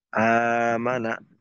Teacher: তো এই জন্য এর সহজার্থে এর চলিত রূপ করা হয়েছে, বা এটার ব্যবহারিক রূপ করা হয়েছে দ্বিতীয় হামজাটাকে আলিফ দিয়ে পরিবর্তন করে এটাকে একটা টান দিয়ে মানা পড়াকে সহজ করা হয়েছে। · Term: মাদ্দে বদল